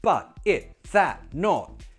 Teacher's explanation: For example, at the end of words, but, it, that, not. Those words, cool, glottal T to finish, fine, it sounds great.